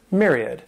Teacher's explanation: This word has three syllables, and the stress is on that first syllable. That M-Y-R sounds like a mere, myriad.